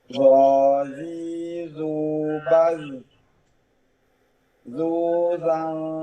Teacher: itbaq, pangkal dan tengah lidah naik